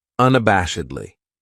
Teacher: this adverb has five syllables and the stress is on that third syllable